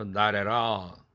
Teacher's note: all에 강세가 있어도 플랩 된다.